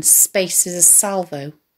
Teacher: note the sibilance of the line space is a salvo which mimics the whistling hissing sound